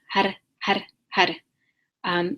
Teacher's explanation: so you're rolling that har, that R, har, har, har. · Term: rolled